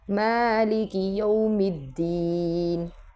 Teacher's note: میم پہ کھڑا زبر ہے، اس کو لمبا کریں گے